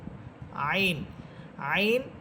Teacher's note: আইন এটা কণ্ঠনালীর মধ্যখান থেকে